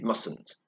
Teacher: So we don't pronounce the first T, we don't say mustn't because that's difficult to say.